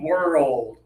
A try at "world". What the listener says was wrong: You're going a little fast. Slow it down. World. Yeah, and then you can get a little faster as you practice, but slow it down to 2 syllables to be more clear.